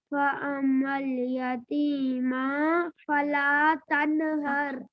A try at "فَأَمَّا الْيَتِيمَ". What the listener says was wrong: ہاں یتیمہ میم زبر ما، لمبا نہیں ہوتا ہے زبر۔ فَأَمَّا الْيَتِيمَ،